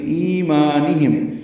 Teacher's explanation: ای آئے مدہ ہے 2 حرکات لمبا کریں گے، مالف مدہ ہے 2 حرکات لمبا کریں گے.